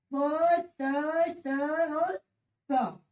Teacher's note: इन ध्वनियों के उच्चारण में स्वर तंत्रियों में कंपन नहीं होता है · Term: अघोष